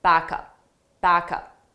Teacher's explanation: So we take the sound from back, the last sound, and we transfer it to the next sound, up, back up. But you have to combine those sounds together so it sounds like one word. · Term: linking